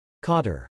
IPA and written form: kɔtɹ̩ (Cauter)